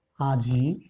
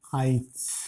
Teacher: যেমন আজি, উচ্চারণে আমরা করি আইচ, পরের ইকারটা আগে উচ্চারিত হয়েছে। আমরা যদি আজি শব্দটাকে ভেঙে নিই তাহলে আজ যোগ ই পাব, এটা উচ্চারণের সঙ্গে মাঝখানে আসছে। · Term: অপিনিহিতি